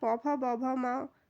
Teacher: देखिए option number C, यानी कि ओष्ठ। होठों से हमारे दोनों जो हमारे होठ होते हैं वो इनको उच्चारित करते समय आपस में मिलते हैं।